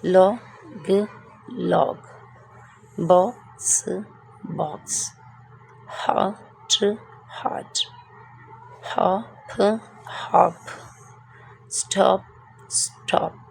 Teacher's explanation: Like vowel O has a short sound O and vowel O has a long sound O. वॉल ओ की short sound जो है वो आ करके निकलेगी और लॉन्ग साउंड इसका ओ से निकलेगा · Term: शॉर्ट वॉल ओ